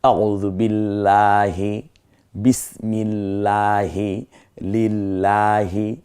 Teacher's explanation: আল্লাহ শব্দ এখানে বারিক হবে, পাতলা হবে